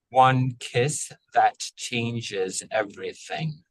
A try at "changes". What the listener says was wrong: Changes. I think that j can be a little more clear, the J sound. Changes.